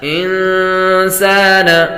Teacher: نون ساکن کے بعد سین حروف اخفاء میں سے آ رہے تو غنہ کر کے پڑھیں گے.